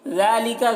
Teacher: ذال کو باریک ادا کریں گے